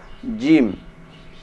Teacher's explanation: Huruf jim, ini cara mengucapkannya tidak boleh disertai keluarnya nafas